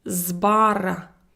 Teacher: before the voiced consonant b, my voiceless s now denotes the sound of its voiced counterpart z